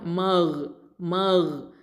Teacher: அதனால் ஹல்க எழுத்து, மேல் தொண்டை எழுத்து.